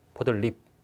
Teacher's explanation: 그러면 먼저 니은 첨가 되고 그럼 니은이 들어오는 순간 앞에 있는 리을로 인해서 니은이 리을로 교체되는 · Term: 유음화